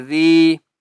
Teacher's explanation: ذال کو ایک الف کی مقدار کھینچ کر پڑھیں گے اور ذال کو نرمی سے پڑھنا ہے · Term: مدہ